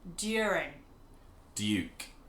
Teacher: we're taking away the J sound and we're just saying DU next to each other